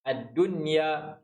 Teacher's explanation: Nun mati bertemu ya dalam satu kalimah, hukumnya adalah izhar mutlak. Bacaannya izhar jelas, tak perlu dengung. Ad-dunya, kita tak baca dunya.